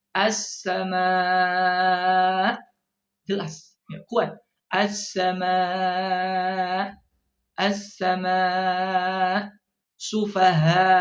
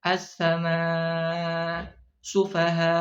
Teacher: lemahnya suara hamzah saat waqaf, ketika berhenti. Ya, seharusnya dijelaskan harus kuat sifatnya ketika ya waqaf kurungan itu.